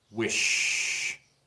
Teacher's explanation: Se siente con we, sí se siente una vibración aquí. Pero wish con sh no se siente una vibración aquí. Significa que no es voiced